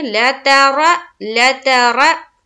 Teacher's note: रा को हम मोटा करके पढ़ेंगे, पुर करके पढ़ेंगे